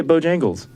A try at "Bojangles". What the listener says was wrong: bow time. You're like putting the emphasis on bow, like Bojangles. Bojangles.